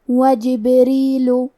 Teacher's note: کلمت جبریل میں حرف البا پہ جزم ہے، کیونکہ با بھی حروف القلقلہ میں سے ہے، تو ہم یہ حرف کو ہلاتے ہوئے یہ کلمہ کو پڑھیں گے۔ وجبریل، حرف را کے نیچے زیر ہے تو یہاں را کا حکم ہے ترقیق، ہمیں حرف را کو پتلی آواز میں پڑھنا ہے۔ آخری میں لام پہ پیش ہے تو ہم پیش کو ظاہر کریں گے۔